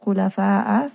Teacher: This is going to be mad wajib, muttasil, because hamza and mad are within that same word. Kha in khulafa is going to be heavy, it is permanently heavy.